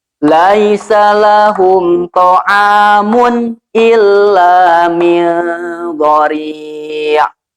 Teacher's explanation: Mun tanwinnya dibaca jelas tanpa ditahan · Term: Idhar